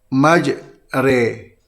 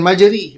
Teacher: Dan imalah ini di antara fathah dan kasrah, di antara alif dan ya. Ya. Dan dia duduk hampir dengan baris bawah ini, dengan huruf ya ini.